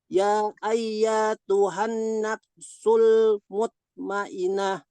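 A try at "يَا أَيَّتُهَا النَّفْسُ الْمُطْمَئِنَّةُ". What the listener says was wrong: Mutmainnah. Nun tasdid.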